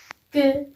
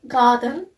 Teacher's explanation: Its voice sound and its place of articulation is velar. That means our back of tongue is used against the soft palate. Its manner of articulation is plosive.